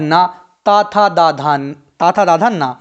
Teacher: ना का उच्चारण स्थान मसूड़े और नाक से होता है, इसे दंत और नासिक भी कहते हैं। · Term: वत्स और नासिक